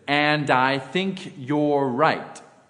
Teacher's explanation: the D is Blended or transferred on to the I also note that the r is held slightly longer we'll talk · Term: linking